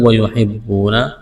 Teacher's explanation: یہاں واو ساکن سے پہلے زبر ہے، واو لین ہے، کھینچنا نہیں ہے۔